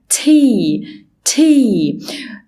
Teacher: وأنا بنطق التي لازم لساني يكون في الالفيولار ريج المنطقة المشرشرة اللي هي ورا اسناني اللي قدام